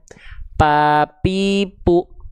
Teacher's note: Kalau huruf P itu yang nempel bagian mana? Bagian bibir atas dan bibir bawah. · Kalau nempelnya bibir dan bibir enggak akan ada huruf fa ya, Teman-teman sekalian. Pa pu enggak akan ada nafas keluar dari sana.